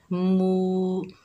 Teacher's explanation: ये वाव मद्दा है, एक अलिफ की मिकदार खींचकर पढ़ेंगे।